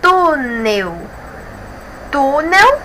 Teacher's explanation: nós temos a penúltima sílaba como a mais forte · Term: paroxítona